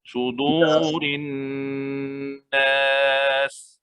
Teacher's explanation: Apa dia wajibul gunnah? Dengung. Dua harakat. Pada huruf Nun. pada huruf nun yang syaddah, nun yang bersabdu.